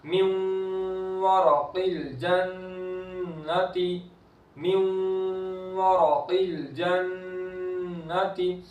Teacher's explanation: نون ساکن کے بعد واو ہے، ادغام ہو رہا ہے تو گنہ کر کے پڑھیں گے، نون کی آواز کو بھی باقی رکھیں گے